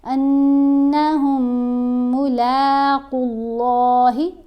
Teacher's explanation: قاف کو بھی موٹا پڑھیں گے، اللہ کی لام کو بھی موٹا پڑھیں گے · ہا کو جب میم سے ملائیں گے پھر غنہ کریں گے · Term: میم کا ادغام